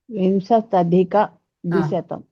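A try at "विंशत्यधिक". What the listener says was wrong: అత్యధిక, అత్య అని చెప్పాలి అక్కడ.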